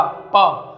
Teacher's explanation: जब तक दोनों ओठ हमारे आपस में नहीं मिलेंगे, जब तक हम इनका उच्चारण नहीं कर सकते ओष्ठ्य व्यंजन का · मेरे ये दोनों ओठ होंगे प, वो दोनों आपस में चिपकेंगे अर्थात मिलेंगे और फिर ऊपर जाएंगे